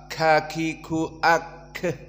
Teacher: huruful hams jika disebutkan sukun maka dia mengeluarkan udara